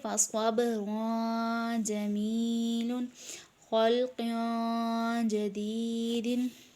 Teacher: تنوین کے بعد جیم ہے، ان دونوں میں اخفا کر کے پڑھیں گے